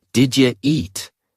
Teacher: The u blends with did and sounds like ja. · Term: connected speech